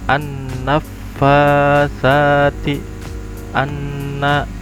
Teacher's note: Bukan nun sukun. Nun yang bertasydid atau mim yang bertasydid itu hukumnya gunnah atau didengung